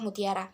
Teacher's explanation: bunyi hambat apikodental laminoalveolar tak bersuara